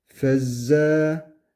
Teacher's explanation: Burada f harfini uzatmıyoruz. Direktmen şeddeye bağlıyoruz. Fezze. Ama buradaki e z harfini uzatıyoruz.